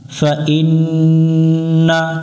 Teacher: নুনের উপরে তাসদিদ আছে, গুন্না করতে হবে, এই গুন্নাটা করা ওয়াজিব, আমরা এই গুন্নাটা বাদ দিব না।